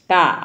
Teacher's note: क अल्पप्राण है और अघोष है